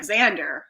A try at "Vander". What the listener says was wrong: Vander. it's a V. I actually think it's Vander.